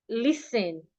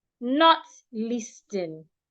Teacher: The T is silent, but then the S should be articulated like a S, not like a Z.